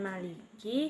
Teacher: Pada bacaan Maliki, di situ ada huruf kaf yang makhrajnya di pangkal lidah bagian atas bertemu dengan langit-langit mulut yang lunak